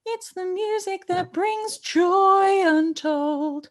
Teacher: put a bit of a ch sound on the joy to really emphasize that word